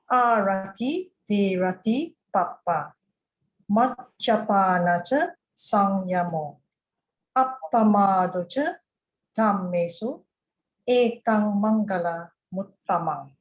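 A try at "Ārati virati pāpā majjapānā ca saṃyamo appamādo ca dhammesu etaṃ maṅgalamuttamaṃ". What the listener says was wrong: Yeah, great. No concerns.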